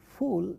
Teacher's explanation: Fa in a word like fool of English is a labiodental sound. what is involved in the production of this sound is if you try saying that fa is lip and teeth.